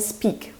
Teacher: speak, which doesn't have that puff of air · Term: unaspirated